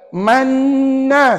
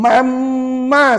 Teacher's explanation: kamu sebut juga wajib seolah-olah dua kali dengung kat situ sedangkan mana boleh dua kali dengung dia sekali je dengung